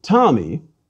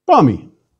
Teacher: are already aspirated if i say for example the name tommy i put a puff of air after the t